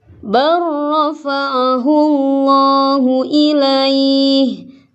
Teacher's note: Ini lam matinya langsung masuk ke ro. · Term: idgham mutaqaribain